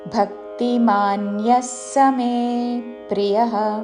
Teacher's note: భక్తిమాన్యస్ అని వెంటనే స మే ప్రియః అని పలకాలి